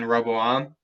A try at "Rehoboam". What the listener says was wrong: I think it's Rehoboam. I think there's a ho in there. Rehoboam.